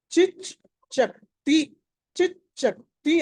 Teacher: చ మామూలు చ అల్ప ప్రాణం, ఛ మళ్ళీ మహాప్రాణము, ఆ తర్వాత తి క త ఈ వికారము.